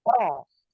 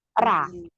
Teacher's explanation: Ketika huruf isti'la atau huruf tebal berharokat fathah, maka terdengar seperti fonem O. Jadi jangan karena dia fathah tidak seperti fonem A.